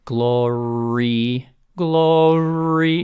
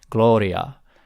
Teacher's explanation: so it's like gloria it's a it's almost an l gloria it's not quite an l but it's a tap it's tapped farther in the back in the mouth